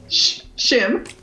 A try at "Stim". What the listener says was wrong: Stim, ma'am. Still close. It's with a T.